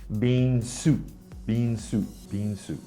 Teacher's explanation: and also the sound at the end of soup right the thai students sometimes will drop the ending consonant